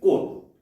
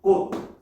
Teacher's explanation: 꽃, 디귿으로 발음이 납니다. 즉, 치읓이라는 음운이 음절의 끝소리라는 음운 환경 안에서 뭘로 바뀐다? 디귿으로 바뀌는 교체 현상이다 라고 볼 수가 있겠죠. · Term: 음절의 끝소리 규칙